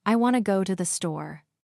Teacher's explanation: The stress is on want and store, while the other words become softer.